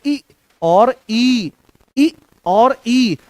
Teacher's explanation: ई या ई जो है इसका उच्चारण कहां से होता है, तो तालु से इसका उच्चारण होता है